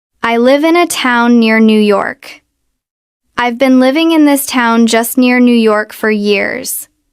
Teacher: The stress is in the same places even though the second sentence has many more syllables. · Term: stress timed language